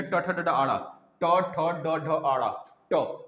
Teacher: जीभ उल्टा हो रहा है, जीभ उल्टा हो रहा है, यानी ट वर्ग किस में आ जाएगा, मूर्धन्य में